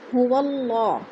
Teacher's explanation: هو اللہ، ادھر اللہ پر پڑھا جائے گا کیونکہ اللہ سے پہلے لفظ واو کے اوپر زبر ہے تو اللہ کو پر کر کے پڑھیں گے۔